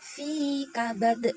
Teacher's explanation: Fi-nya itu dibaca mad tabi'i karena ada kasrah bertemu dengan huruf ya. Dibaca panjangnya satu alif atau dua harokat. Kemudian kabadnya itu termasuk dalam qalqalah kubra karena berada di akhir